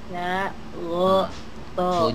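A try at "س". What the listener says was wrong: Ujung lidah. Sa. Ah, bukan sya. Sa. Ujung lidahnya.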